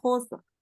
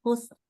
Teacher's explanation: Tetap ro-nya tebel. Tebel itu berarti pangkal lidah naik ya. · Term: ro dibaca tebal